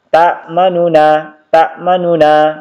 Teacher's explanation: Jadi sebagian besar dibaca ta'manuna, akan tetapi teman-teman sekalian harokat dhamma pada nu dibaca tidak sempurna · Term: raum